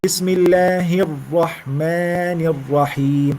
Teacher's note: Hirra. It's stressed. You push at the ra, but don't repeat it.